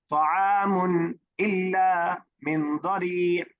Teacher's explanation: طعام میں کوئی غنہ یا ناک میں آواز دے جانے کی کوئی بالکل بھی ضرورت نہیں